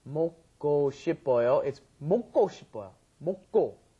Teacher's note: when you've got that K, the gyuk, followed by another gyuk, it ends up being a double gyuk most of the time